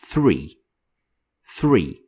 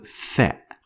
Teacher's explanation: It is a voiceless sound. So you don't use the vocal cords while you're using the letter Tha.